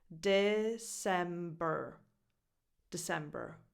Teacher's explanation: De with a lax e, like in the word it.